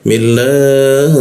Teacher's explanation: jangan lupa ha-nya posisi tenggorokan bagian bawah disampaikan udaranya sampai situ ya